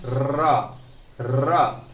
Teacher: रा को कहते हैं लुंठित, लुंठित या प्रकंपित